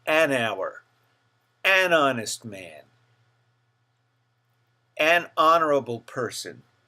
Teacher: we use an when a word begins with a silent h it's almost as though the H were not there